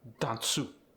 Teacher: have the short a sound so when you have Japanese speakers you often get an approximation between a short a and a short U